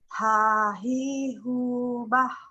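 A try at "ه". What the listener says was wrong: Masih ada H, bah. Kalau bah itu ada penekanan Bu, tapi kalau H dari dalam, bah, lepas saja, lepaskan kegaduhan yang ada di dalam diri kita. Keluarkan semuanya. Masih ada terasa bah sama saya, atau mungkin terganggu ya.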